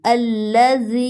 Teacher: یا پر مد ہے، 3 سیکنڈ کے لیے کھینچیں گے۔